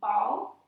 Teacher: ball in English, which is this nice, short, one-syllable word. It starts with that nice bilabial. It's a perfect, early target for requesting, versus pelota, which is just a little more complicated for a little one.